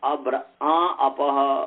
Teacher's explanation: आ जो है ये नाक और मुख दोनों से बोला जा रहा है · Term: अनुनासिक